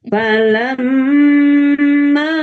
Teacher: Amma ini gunah musyaddadah ya. Jadi ee sempurnanya tiga harakat ya. Dua sampai 3 tapi lebih bagus ya sempurnakan saja tiga harakat.